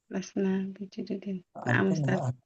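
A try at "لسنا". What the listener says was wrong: Antum harusnya lasna panjang.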